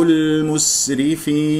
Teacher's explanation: سين يجري فيها صوت والنفس ومن احرف الصفير